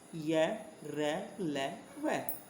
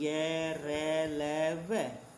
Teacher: अंतस्थ व्यंजन में हमारी जीभ जो होती है मुख के किसी भी भाग को पूरी तरह से स्पर्श नहीं करती